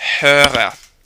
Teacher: I rolled the R after the umlauted O